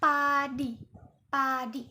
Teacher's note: peh ini dihasilkan tanpa getaran pita suara yang tak bersuara. Nah, di sini ya tak bersuara ya.